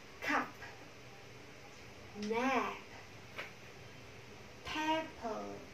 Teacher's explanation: Cùng đặt vị trí là hai môi chạm vào nhau và bật ra. Tuy nhiên, một âm là hữu thanh b và một âm là vô thanh.